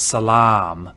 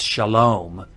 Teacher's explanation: if you know the arabic word for peace it's salaam and that long ah in arabic is now an o in hebrew